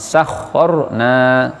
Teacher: ro sukun yang didahului fathah juga tafkhim. Makanya bibirnya moncong.